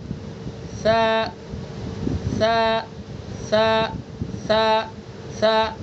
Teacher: زبان کی نوک ثنا علیہ کا کنارہ